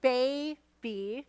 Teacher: The stress is on bay. Your mouth drops open farther. So in the second syllable, or the last syllable of these words, is unstressed.